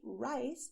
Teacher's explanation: When you say rice, your tongue bends backwards.